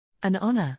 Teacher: the H in honor is silent, giving it a vowel sound, so we use an.